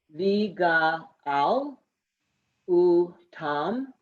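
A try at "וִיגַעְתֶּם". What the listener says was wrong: Not ooh. Oh. Oh, Tom.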